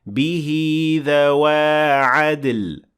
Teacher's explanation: And here we have another linking med, which means that you're going to add a ya here between these 2 words